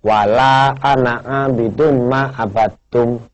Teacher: padahal Ananya itu kan panjang tapi wajib dibaca pendek